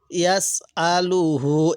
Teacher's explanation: এখানে হামজার মধ্যে টান দিব না। ইয়াসআলুহু, এই হায়ের মধ্যে টান দিব।